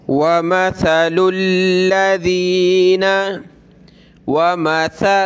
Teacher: सा पे ज़बान निकाली जाती है थोड़ी सी